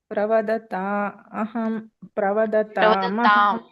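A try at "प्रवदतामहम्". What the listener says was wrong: ಮತ್ತೆ ಮಹಂ ಹೇಳಬೇಡಿ ಪ್ರವದತಾಂ ಅಂತ ಹೇಳಿದಾಗ ಮುಂದೆ ಅಹಂ ಅಂತ ಹೇಳಬೇಕು ಮುಂದೆ ಅ ಬರುತ್ತೆ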